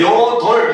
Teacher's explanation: 리을, 비읍 받침이지만 리을로 소리 나잖아요